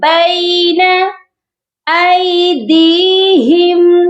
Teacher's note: دال کے ساتھ یائے مدہ ہے اور اس کو ہم نے ایک الف کے برابر لمبا کر کے پڑھنا ہے